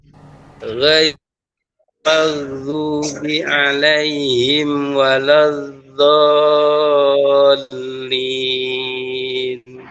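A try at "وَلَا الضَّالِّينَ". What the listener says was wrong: Lebih panjang lagi do-nya, 6 harokat.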